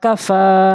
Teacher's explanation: কাফের উপর আমরা দাঁড়াবো না ফার উপরে দাঁড়াবো কেননা ফা এক আলিফ টান রয়েছে